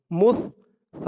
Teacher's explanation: সার আওয়াজটা একদম নরম পাতলা হবে। মুস, সা আলিফ জবর সা, সা এক আলিফ টান, জবরের পরে খালি আলিফ।